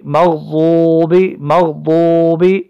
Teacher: غین بھی موٹا پڑھا جائے گا، ضاد بھی موٹا پڑھا جائے گا یہ، اور با کے نیچے صرف زیر ہے۔